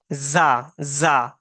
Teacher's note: سیٹی جی کی آواز آنی چاہیے باہر